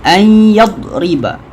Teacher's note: Nun sakinah, selepasnya ada huruf ya. Jadi dia adalah idgham ma'al qunnah. Dengung 2 harakat.